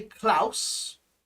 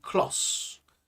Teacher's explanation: We don't say Klaus, it's usually Klos, so more of an O sound. Claustra, and then in the middle part it's more of a tra.